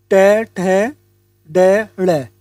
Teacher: इनका उच्चारण हम मूर्धन्य की सहायता से करते हैं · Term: मूर्धन्य वर्ण